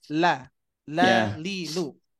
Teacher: huruf lam itu kan haknya itu adalah tipis